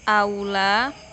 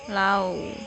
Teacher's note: Di sini tulisannya hurufnya A sama U, tapi dibacanya A sama W ya, au. Terus ada yang dibacanya I, yang huruf A sama I. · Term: diftong